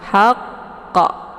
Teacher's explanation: jadi tasydidkan dulu baru dipantulkan qafnya, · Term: qalqalaf akbar